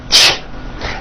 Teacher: It's a combination of the T sound, t, and the SH sound, sh. When you put these 2 sounds together, you get a ch. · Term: CH sound